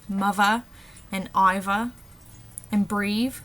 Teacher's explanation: For the voiced, we have words like mother and Iva and breathe, where the TH is changed to a V